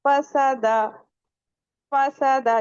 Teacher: आपके ऊपर वाले टीथ नीचे वाले जो हमारे लिप्स हैं उस पे आके लग जाते हैं। अगर नहीं लगेंगे तो फा का मखरज अदा नहीं होगा।